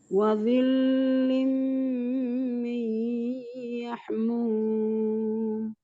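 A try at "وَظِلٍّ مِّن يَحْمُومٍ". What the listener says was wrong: Ketika lam tasdid sifatnya lunak saja ya, tidak ditahan. Tapi ditasdidkan saja, bukan ditahan lamnya wadhillim, tidak wadhillim, tapi wadhillim min yahmum. Alirkan hanya yahmum.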